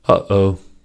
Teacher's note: The middle choking sound is the glottal stop. The glottal stop occurs when the vocal folds are briefly closed and then released.